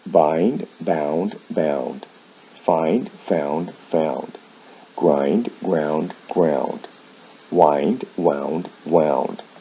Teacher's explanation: and you'll see the sound shifts here with verbs like find they involve a vowel change in the past and the past participle from i to ou the consonant sounds remain the same